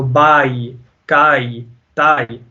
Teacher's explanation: The ya with the jazm makes it go down to e, a kind of an e sound. So you're going from ah to e.